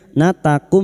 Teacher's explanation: Natakum mim sukun bertemu ain idhar syafawi. Mim sukun dibaca jelas tanpa mendengung. Bertemunya mim sukun dengan huruf hijaiyah selain mim dan ba namanya idhar syafawi.